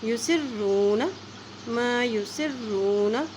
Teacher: سین کی زیر کو را کے ساتھ ملائیں گے کیونکہ را کے پر شد ہے